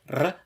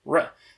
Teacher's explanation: I pronounce it like a trill, r, when I was reading the chart, but following the actual recommendations, I probably should pronounce it as an Englishy approximant, r